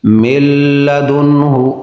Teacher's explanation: نون ساکن کے بعد لام ہے تو ادغام بغیر غنہ کے، لام اور را میں غنہ نہیں ہوتا